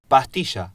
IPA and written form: pa:.'ti.ʃa (pa(s)tilla)